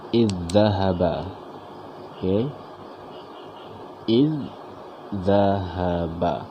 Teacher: memasukkan bunyi huruf yang pertama ini ke dalam huruf yang kedua sehingga menjadi satu huruf yang bertasydid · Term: idgham